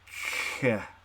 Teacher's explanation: What's really kind of hard to tell is that a k does have, it's kind of a melding of a plosive and a noisy signal, because you start with that k, you know, that you've held the air in and then you're letting it escape, but as you let the air escape, you're making it kind of a fricative. So you go k like that.